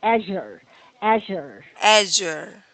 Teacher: The stress is on the first part.